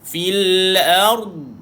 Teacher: Bila mati pada dhan, kedengarankan bunyi istitalah dia, iaitu memanjangkan bunyi dia.